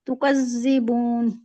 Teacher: تکذبون زی نہیں، زی buzzing sound نہیں آنا چاہیے